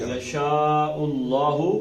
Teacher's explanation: پیچھے پیش ہوئی تو اللہ کا لام موٹا پڑھنا ہے